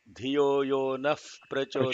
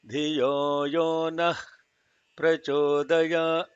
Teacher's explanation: That is incorrect chanting. There is no aspiration of ha in the middle of the word, in the middle of the sentence.